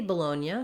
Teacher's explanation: in american english we would say that with second syllable stress on the low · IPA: /bəˈloʊnjə/